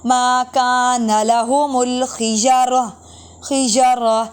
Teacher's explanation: گول تا وقف میں ہا کی آواز دیتی ہے